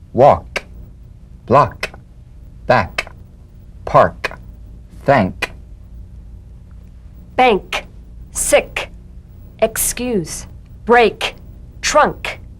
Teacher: The unvoiced tongue back plosive consonant. With the tongue in the G position, let the tongue spring away in the soft, unvoiced click of the K drum beat. Feel a crisp tap and a pulsation in the back of the tongue.